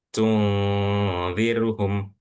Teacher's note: Jadi dengungnya nun sukun ini jadi samar. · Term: ikhfa